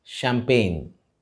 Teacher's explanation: The CH at the beginning of this word is pronounced as sh, and the G in the middle is silent.